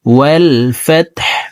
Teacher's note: হাকে ওয়াকফের ক্ষেত্রে সাকিন করে ফেলবে।